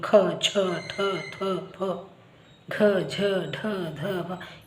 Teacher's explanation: ಇವನ್ನ ನಾವು ಮಹಾಪ್ರಾಣಾಕ್ಷರಗಳು ಇಲ್ಲಿ ಹೆಚ್ಚು ಉಸಿರನ್ನ ಕೊಡ್ತೀವಿ ಖ ಛ ಠ ಥ ಪ ಡ ಧ ಬ ಈತರ ಹೆಚ್ಚು ಉಸಿರನ್ನ